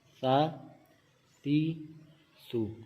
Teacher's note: مخارج کا بھی ہم نے خیال رکھنا ہے کہ سا کو ہم نے سا پڑھنا ہے، سیٹی کی آواز اس میں نہیں نکالنی